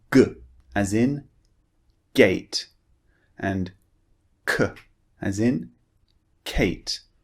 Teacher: they're a very short and forceful sound coming through from the back of your mouth